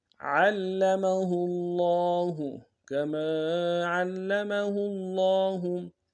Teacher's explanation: ہاں کو لفظ اللہ کے لام کے سامنے لانا ہے. لفظ اللہ کے لام کے اوپر تشدید زور دیں گے. لام کے اوپر کھڑا زبر ہے ایک امداد میں کھینچیں گے.